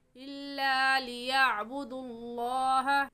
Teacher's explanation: लफ्ज़ अल्लाह से पहले पेश आ गए हैं तो इसलिए इस लफ्ज़ अल्लाह को पूरी यानी मोटा करके पढ़ेंगे